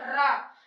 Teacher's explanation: जब र बोलते हैं तो एक बार जिभिया हमारी कांप जाती है। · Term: प्रकंपित वर्ण